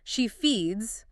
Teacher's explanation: She feeds with the buzzing Z sound. · the S must sound like a Z after a voiced sound or S after a sizzling sound is the essential mark of fluency.